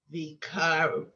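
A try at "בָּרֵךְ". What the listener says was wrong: vav. I'm sorry, that's a vet. Excuse me. So you have v and then another v sound.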